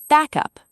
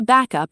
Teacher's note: squeeze it into one word, back up, stress on back